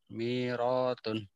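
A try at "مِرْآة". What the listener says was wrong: Ada hamzah. Mir ya, mir'atun.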